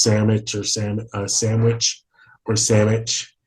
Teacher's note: that D is pretty much non-existent, and sometimes the W is too.